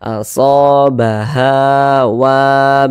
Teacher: Pokoknya kalau ada alif, sebelum alif ada baris satu di atas, nah maka huruf yang memiliki baris satu di atas nih harokat fathah dibaca panjang. Sehingga so mad tabi'i panjang 2 harokat, ha mad tabi'i panjang 2 harokat, wa mad tabi'i panjang 2 harokat